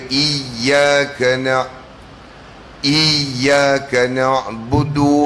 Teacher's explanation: Dan ya yang kedua baru dia keluar daripada syajariyah. Nama mahrajnya syajariyah. Tengah daun lidah diangkat ke langit.